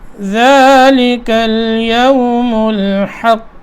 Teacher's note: ہا کو قاف سے ملانا ہے، کیونکہ قاف کے اوپر شد ہے تو اس کو تھوڑی یہاں دیر لگے گی